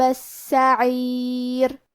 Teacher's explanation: کلمت السعیر میں حرف السین کو 2 حرف کے برابر پڑھیں گے